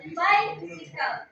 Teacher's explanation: So, it is dactylic rhythm has its foot consisting of a stressed syllable followed by the two unstressed syllables